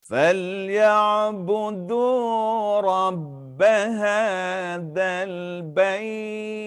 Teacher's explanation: Bait dipanjangkan dengan 6 harakat. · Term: wakaf maklin